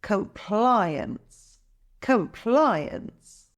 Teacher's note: the stress is on the second syllable ply